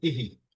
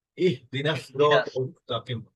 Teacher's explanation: এখানে ইহদিনা সিরাতাল মুস্তাকিম, ইহদিনাটা একটু আপনার ইহি হয়ে গেছে, আপনি বলেছেন ইহি, মানে একটু হালকা আসছে, কিন্তু এটা কিন্তু ইহদিনাস মানে হাটা একদম গলার শেষ দিক থেকে উন্মুক্ত ভাবে উচ্চারণ করতে হবে। ইহদিনাস সিরাতাল মুস্তাকিম, হ্যাঁ ইহদিনাস।